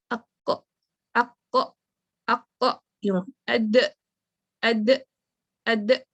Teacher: آف ہو رہی ہے sound. یہ جو کٹنگ ساؤنڈ ہے نا، بالکل آواز کا ایک دم سے جھٹکے سے بند ہونا، اسی سے حمزہ کی ادائیگی ہو جاتی ہے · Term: حمزہ ود سکون